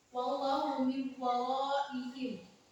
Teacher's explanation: Cara membacanya yaitu seperti tasydid. Seakan huruf waw di sini menjadi huruf waw tasydid.